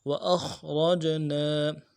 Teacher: خا کو موٹا پڑھیں گے، حمزہ کو خا کے ساتھ ملائیں گے، را کو موٹا پڑھیں گے، جیم کے ساتھ ملانا ہے، اور جیم میں حروف قلقلہ ہوگا، قلقلہ کریں گے۔